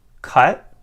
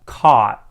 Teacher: i hold the vowel a little bit longer for ah